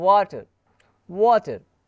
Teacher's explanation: व अगर आप प्रोनंसिएट कर रहे हैं तो आपके जो लिप है ना वो राउंड कर रहा होगा। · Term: विथ लिप्स राउंडेड